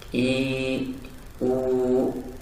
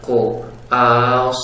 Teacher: Ketika pengucapan a, kita terasa pengucapan hamzah yang ringan. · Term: tarkik